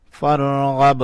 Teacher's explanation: با کے اوپر کلکلا کیا. با کو اٹھایا.